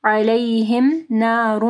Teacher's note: تنوین ہے، اس کے بعد میم ہے، ادغام آ رہا ہے غنہ کے ساتھ